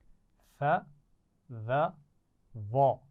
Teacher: ثا، ذال اور وا آپ جانتے ہیں کہ زبان کی نوک اور اوپر والے دانتوں کی نوک سے ادا ہوتے ہیں. ثا کی آواز میں، ذال کی آواز میں اور وا کی آواز میں سیٹی نہیں ہوتی. تو ثا کو نرمی سے پڑھا جاتا ہے اور اس کی آواز باریک ہوتی ہے.